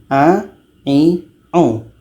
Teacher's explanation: a ini letaknya di tengah-tengah tenggorokan dan seperti ini kita ucapkannya lidah kita biasa saja a i